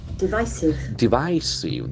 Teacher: That I diphthong is very prominent.